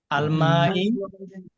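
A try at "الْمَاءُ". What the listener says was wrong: ই কেন জের হইলে কেন ভাইজান?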